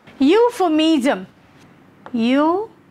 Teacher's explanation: definitely the primary stress will be on your first syllable